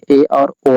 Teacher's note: अर्धसमृद्ध स्वर में ए और ओ आते हैं, इसके उच्चारण में समृद्ध से थोड़ा अधिक मुख खुलता है।